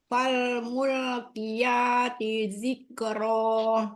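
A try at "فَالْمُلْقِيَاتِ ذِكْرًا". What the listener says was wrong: Zalnya keluarkan ujung lidah. Zikro.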